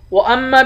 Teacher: وَأَمَّا پہ غنہ کریں گے، اور الف کے اوپر مد ہے، اس مد کو تین الف کے مقدار کھینچ کر پڑھیں گے